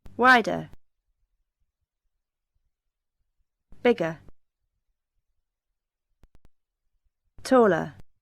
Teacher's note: Schwa is a very common short sound in English. It is the sound at the end of the comparative words.